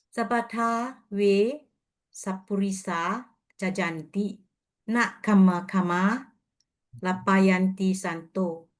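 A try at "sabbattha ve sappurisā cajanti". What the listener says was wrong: Okay, great.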